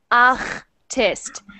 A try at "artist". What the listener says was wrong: Much better. Try it again, but try to get it even further, because right now it's making that ch sound a little bit.